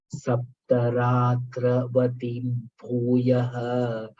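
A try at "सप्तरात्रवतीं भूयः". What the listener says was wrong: Vatim no. Vatim dirgha.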